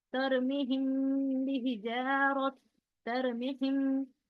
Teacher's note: गुन्ना करके नाक से निकालना है आवाज।